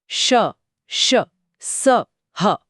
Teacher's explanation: नाम से ही स्पष्ट है, ऊष्मा यानी गर्मी। इन ध्वनियों में हवा को एक बहुत संकरी जगह से रगड़ खाते हुए बाहर निकलना पड़ता है। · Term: उष्म व्यंजन, ऊष्म व्यंजन